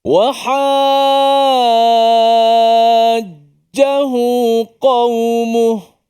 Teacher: mesti baca secara enam harakat dipanjangkan